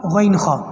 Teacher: حمزہ ہا، اندر نیچے کی طرف جو ہمارا حلق ہے سینے کی طرف، یہاں سے آواز آتی ہے حمزہ ہا، اور پھر جو بیچ میں دو ورڈ ہے عین ہا، ان کی آواز بیچ حلق سے آتی ہے، اس کو کہتے ہیں درمیان، حلق کا درمیان، اور آخر میں غین اور خا، بالکل حلق کا لاسٹ اوپر کی طرف آ جائے تو ان دونوں کی آواز اوپر سے ادا ہوتی ہے